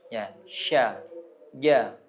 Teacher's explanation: kalau kita baca misalkan shin itu kayak ada iya-nya. Karena memang tempatnya sama.